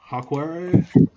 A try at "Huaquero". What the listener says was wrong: Huaquero. I think the H is silent.